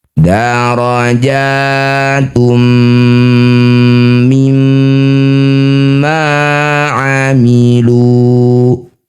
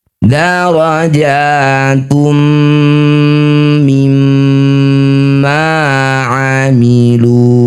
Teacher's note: harus rata ya dengungnya sama-sama dua harakat. Jangan ee yang satu lama, yang satu sebentar.